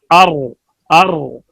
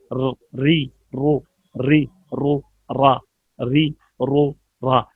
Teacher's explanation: रा की अदायगी में ज़बान कपकपाए, इसमें राशा या लर्जा हो, सिर्फ रा में। लर्जा हो, सिर्फ रा में पाई जाती है, बाकी किसी हरफ में ये सिर्फ नहीं पाई जाती। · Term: मुशाबहत तकरार